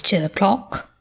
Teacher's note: and then we have the characteristic rp feature of smoothing especially it's a feature of traditional rp or conservative rp and you get to hear it in the phrase two o'clock